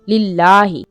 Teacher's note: लाम को क्या करेंगे? खड़ी जबर इसके थोड़ा सा लंबा करेंगे। लिल्लाही, इस लफ्ज को मोटा नहीं पढ़ेंगे।